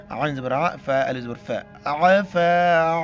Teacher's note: عین کو گلے سے کرنا ہے